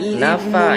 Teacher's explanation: mad asli baca 2 harokat panjang